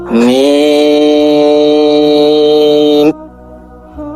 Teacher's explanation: এই হরফটি বলতে উভয় ঠোঁট মিলিয়া শুরু হবে, উভয় ঠোঁট মিলিয়া শেষ হবে। চার আলিফ পরিমাণ লম্বা হবে, ওই সময়টা মুখ খুলে থাকবে।